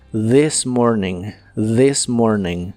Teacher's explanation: la th de This suena como una de vibrante